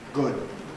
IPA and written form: gʊd̚ (good)